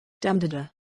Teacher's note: dactyl, stressed, unstressed, unstressed